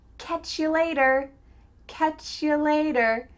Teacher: Here again, we're reducing you to ya.